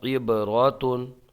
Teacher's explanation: یہاں پر با میں قلقلہ ہوگا، آواز پلٹ کے آئے گی